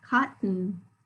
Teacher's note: That second syllable very clearly is a schwa spelled with O.